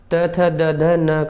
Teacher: दंत से उच्चारण होता है त वर्ग का। त थ द ध न का उच्चारण दंत से होता है।